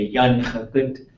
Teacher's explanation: But the ya is running into the na, and there's some contraction going on there.